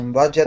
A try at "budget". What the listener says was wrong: Yeah, budget and tragic. So it could be maybe you might want to work on your G's because it sounds like both of those words have G's. And the second one is pronounced budget. Budget and tragic.